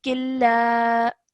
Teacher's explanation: join the sound of kaf to the lam and ignore the sound of the noon sakin over here. So this would be killa, like that. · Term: idgham kamil